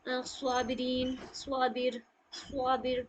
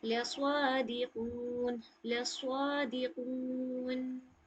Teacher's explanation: स्वाद को थोड़ा मुंह भर के पढ़ा जाता है, ओके। जैसे स्वाबिरीन, स्वाबिर, स्वाबिर मुंह भर के पढ़ेंगे, प्लस इसमें सीटी सी भी आवाज निकालिएगा, लस्वादिकून, लस्वादिकून।